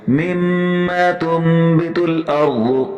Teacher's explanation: نون کے اوپر میم ہے چھوٹا سا لکھا ہوا، اس میم کو ادا کرنا ہے، نون کو نہیں پڑھنا. کیا پڑھنا ہے تنبت، یعنی یہ جو جزم ہے یہ میم کا ہو چکا ہے، مما تنبت الارض.